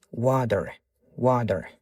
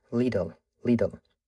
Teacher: Xo'p, qayoqdan kelyapti bu qoidalar desangiz, qachonki mana bu T tovushimiz ikkita unli tovushni o'rtasida kelganda American accentda D talaffuz qilamiz. Bizdagi D tovushi emas, sal boshqacha, yumshoqroq aytilishi kerak bo'ladi D.